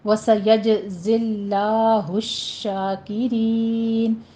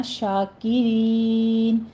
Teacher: شاکرین میں شین کے اوپر تشدید ادا کیجیے، اوپر فتحہ قائمہ ہے، 2 کاؤنٹ کر کے ، پھر شاکے نہیں کہنا، شاکرین، رین میں را باریک پڑھتے